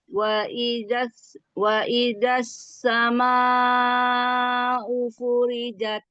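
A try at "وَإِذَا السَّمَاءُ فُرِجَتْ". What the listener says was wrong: Gesek sedikit zal. Keluarkan ujung lidah. Wa idas sama'u furijat.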